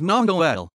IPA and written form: moŋ.ol (Mong-ol)